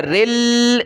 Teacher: رل سخت کریں گے لام کو تشدید کی وجہ سے. رل لجی لجی لجی لجی یا پلس یا ناک میں آواز پیدا ہوگی.